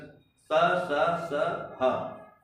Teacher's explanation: स स स ह का उच्चारण करने में जीभ स्पर्श नहीं करता केवल श्वास घर्षण के साथ निकल जाता है स स स ह मतलब ही तीन स और ह उष्म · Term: उष्म व्यंजन